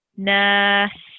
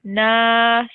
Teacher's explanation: So this kasra comes off and you say nas and put a temporary sukoon on top of the seen.